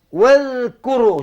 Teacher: Udara kena tahan tapi suara terlepas sama. Kerana bersifat dengan rakhawah. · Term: zal